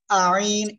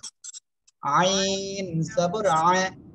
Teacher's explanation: দেখেন বাতাস বের হবে, একটু বাতাস না বের হলে কিন্তু এটা ভুল হবে